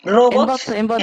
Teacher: La fuerza de voz está en bots.